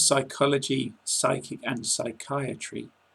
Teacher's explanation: In the words psychology, Psychic and psychiatry, You must never sound the p.